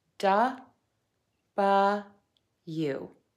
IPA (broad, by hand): dʌbəlju